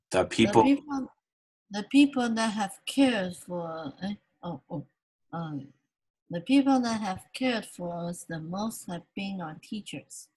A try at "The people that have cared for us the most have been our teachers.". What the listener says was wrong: Stronger. your stress is stronger. The people that have cared for us the most, let's do cared stretch. Stretch the vowel, okay? The people that have cared for us the most have been our teachers, okay?